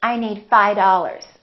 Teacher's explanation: that V in the word five just kind of disappears